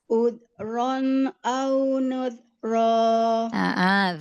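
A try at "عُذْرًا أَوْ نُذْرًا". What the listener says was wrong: Zalnya alirkan suaranya. Rokhwah. Udron au nudra. Nuz. Udron au nudra. Nu. Udron au nudra. Alirkan. Udron au nudra. Nu. Coba sekarang latih huruf zal. Zazizu. Az iz uz. Udron. Udron au nuzra. Au sampai monyong, wawunya dialirkan.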